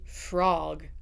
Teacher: in standard American, we're going to say frog. It's very round. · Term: open o